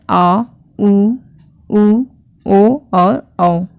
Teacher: ये ऐसे स्वर हैं जिसमें हमारे जीभ के पिछले हिस्से पर प्रेशर लगता है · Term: पष्ट स्वर